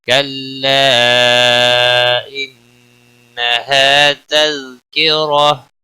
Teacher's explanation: کلا مد منفصل ہے, 3 الف کے برابر کھینچ کر پڑھیں گے. انہا نون مشدد پر غنہ ہوگا, ہا الف مدہ ہے ایک الف کے برابر کھینچ کر پڑھیں گے.